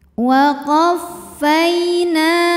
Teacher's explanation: hukumnya adalah mad tabi'i dhahiri sebab ada harokat fathah yang bertemu dengan alif. Maka cara bacanya huruf nun dipanjangkan 2 harokat.